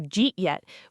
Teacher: often compresses into something close to Jeet yet, which sounds almost like a single strange word to untrained ears, but is simply did you eat yet spoken extremely fast and casually.